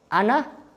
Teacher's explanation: huruf hamzah di pangkal tenggorokan, terus di ujung lidah ke langit-langit, artinya tenggorokan sama di sini kan jauh. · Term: mutaba'idin